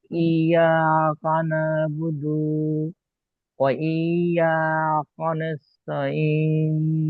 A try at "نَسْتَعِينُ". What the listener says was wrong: ওয়া ইয়া কানাস্তা, তাটা পরিষ্কার তোর মতো উচ্চারণ হবে না। ওয়া ইয়া কানাস্তাঈন।